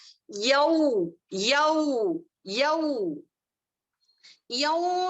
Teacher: واوے لین کی ادائیگی ہونٹوں کے درمیان یعنی کہ تھوڑا سوراخ اور گولائی ہونا. گولائی جو ہے کتنی ہونی چاہیے، یعنی کہ حرف مدہ میں زیادہ گولائی ہوتی ہے لیکن حرف لین میں گولائی کم ہوتی ہے ہونٹوں کی.